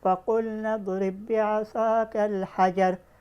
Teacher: تو فَقُلْنَا اضْرِبْ بِعَصَاكَ میں ادغام صغیر مثلین ہوا، لیکن اس میں ہم غنہ نہیں کر کے پڑھیں گے